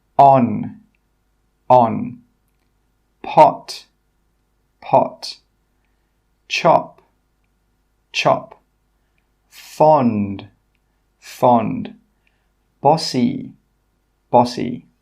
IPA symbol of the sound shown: ɒ